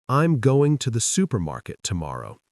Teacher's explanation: has stress on going, supermarket, and tomorrow, while smaller words like to andthe are spoken quickly.